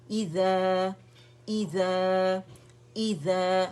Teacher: یہ مد طبیعی حرکتین 2 کاؤنٹ کے لیے آواز اوپر جائے گی. ٹھیک ہے مد اصلی ہے.